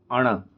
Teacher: फिर ण मूर्धा प्लस नासिका। मूर्धा प्लस नासिका से क्या बोला जा रहा है? ण का उच्चारण बोला जा रहा है